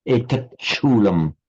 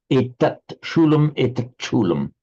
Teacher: Note the sandhi here. The ta, the final ta followed by a sh becomes a doubled ch